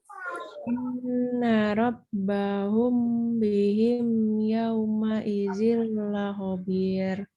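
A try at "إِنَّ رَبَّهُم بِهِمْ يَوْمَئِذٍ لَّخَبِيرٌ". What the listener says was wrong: Ahsan jiddan, Masya Allah. Barakallahu fiik.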